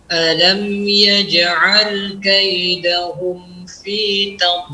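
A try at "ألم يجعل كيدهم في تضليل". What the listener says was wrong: Jangan masuk hidung. Anda mendengar seperti masuk hidung. Kaidahum. Cukup huruf mimnya saja. Huruf h-nya tidak. Kaidahum. Hu. Kaidahum.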